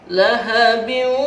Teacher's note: Kalau dimasukkan dalam istilah tajwid disebut idgham. Idgham bi gunnah, memasukkan dengan dengung dan ditahan. Lahabiu, masuk dia.